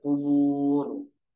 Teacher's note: Nah, ro-nya dibaca tebal atau tafkhim. Kubur, tidak kubur, tidak, tapi dibaca tebal kubur.